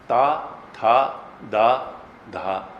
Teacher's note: दांत में जब तक जीभ नहीं लगेगी ता, था, दा, धा, इनका उच्चारण ठीक नहीं होगा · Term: तवर्ग